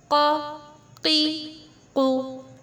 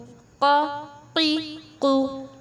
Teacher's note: زبان کی جڑ پر تالو سے لگ رہی ہے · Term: قاف